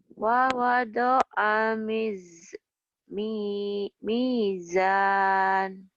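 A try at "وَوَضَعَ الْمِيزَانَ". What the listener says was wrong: Di lamnya tuh suka buru-buru gitu, jangan buru-buru. Kayak makan permen diemut dulu, jangan langsung ditelan.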